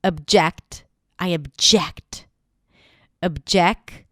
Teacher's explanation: it has a fun little schwa at the beginning, even though it's spelled with an O. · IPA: /əbˈdʒekt/